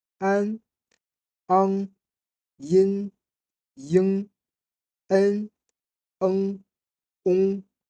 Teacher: La différence principale ne tient pas à la voyelle, mais au point d'articulation de la consonne nasale. Un intérieur versus un postérieur. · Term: finales nasales